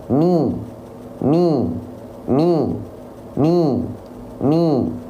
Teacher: artikulasi vokal I pada harakat kasrah itu dengan cara merendahkan rahang bawah